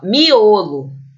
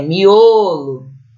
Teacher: percebam que o é forte nessa palavra é miolo e ele é fechado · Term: o fechado